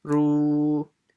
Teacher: The ra will be stretched by waw sakin